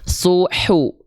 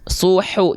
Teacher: H kecil dilafalkan dari bagian tengah tenggorokan, ya. Dia memiliki karakteristik nafas yang berbisik, mengalir dengan berbisik.